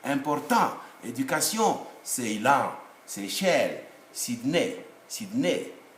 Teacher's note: in French, it's only the last syllable which is stressed, not the middle syllable or the initial syllable.